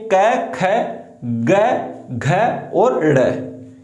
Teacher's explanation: कंठ उच्चारण स्थान होता है क वर्ग